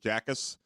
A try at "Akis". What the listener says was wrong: Akis. It's the J is silent.